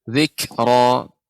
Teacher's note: ini bukan huruf qalqalah, tidak memantul, akan tetapi dia memang ada sifat hamsnya